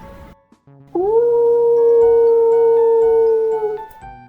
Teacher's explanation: Коли ми говоримо звук у, губи сильно витягують вперед, утворюючи округлену форму. Зуби залишаються розімкненими.